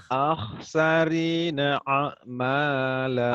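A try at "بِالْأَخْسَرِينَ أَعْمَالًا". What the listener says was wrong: alif dulu baru ain. Jangan a dulu baru ain.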